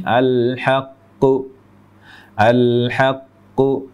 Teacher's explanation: Q yang pertama dihilangkan qalqolahnya · Jadi bunyi aslinya al-haqqu, al-haqqu. Jadi qaf yang pertama dihilangkan qalqalahnya sehingga menjadi al-haqqu